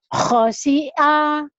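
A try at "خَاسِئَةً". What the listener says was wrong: Nggak ada yang panjang. Khosi'a. Khosi'a.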